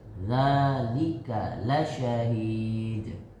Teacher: Za panjang, ka pendek.